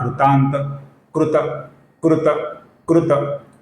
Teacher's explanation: यहां पर जो अंतिम त है दोस्तों, ये अपूर्ण त है, किंतु पद के अंत में आया हुआ है, इसका हम लगभग पूरा उच्चारण करते हैं